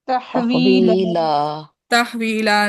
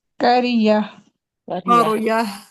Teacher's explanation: तो वक्फन जो तनवीन का नून होता है वो गायब हो जाता है।